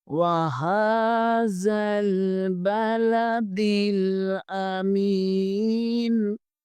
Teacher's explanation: واو کے اوپر زبر ہے، واو کا مخرج ادا کرتے ہوئے ہونٹ گول کریں گے۔